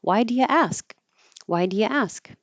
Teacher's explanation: You won't hear the duh probably at all.